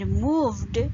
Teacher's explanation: In moved, v sound is voiced. So it ends with d sound.